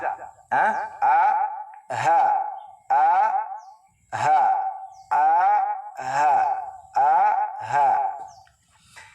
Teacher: Ang makhraj ng ha, ang lugar kung saan maglabas ang ha ay sa aqsa al-halq. Big sabihin, dito sa pinakadulo ng ating lalamunan.